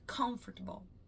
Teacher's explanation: Comfortable, a ênfase. A sílaba mais forte é o con, comfortable